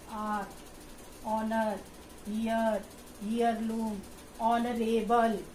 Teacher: So vowel sound will come because we will not pronounce the word H. H is silent.